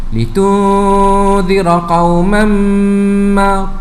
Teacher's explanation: Tanwin berjumpa dengan mim, hukumnya idgham ma'al gunnah. Ya, perlu didengungkan bacaan dengan kadar dua harakat juga.